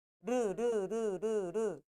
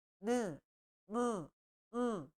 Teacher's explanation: 코를 잡고 하면 르르르 르르 코가 안 울려요 근데 나머지 애들은 느 무 으 코가 다 울려요